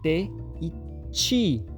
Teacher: nas palavras nativas do Japão não existe ti, é chi